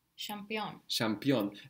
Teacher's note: The ch becomes ş.